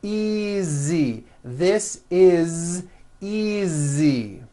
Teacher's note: Again, the S is like a voiced Z.